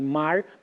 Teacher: esse som de R, no caso, re, pode ser um retroflexo, em mar, pode ser mar, aspirado, pode ser mar, entendeu?